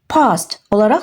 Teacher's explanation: Yəni a səsini biraz uzadırıq